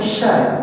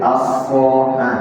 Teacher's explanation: Karena sifatnya sya itu tafashi, sod itu sofir.